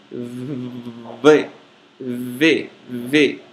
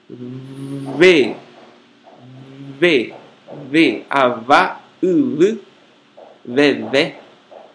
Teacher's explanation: Pronuncia-se como o V do castelhano em huevo. É um B fricativo e não oclusivo. Isto é, para pronunciá-lo, os lábios não se fecham, apenas friccionam-se. Sua representação no alfabeto fonético internacional é a letra grega beta minúscula.